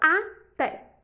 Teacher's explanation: até possui duas sílabas então a última sílaba é acentuada é uma oxítona